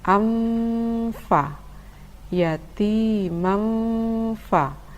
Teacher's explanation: Tanwin bertemu dengan huruf fa dibaca dengung dan samar. Samar maksudnya adalah samar antara tanwin dan huruf fa.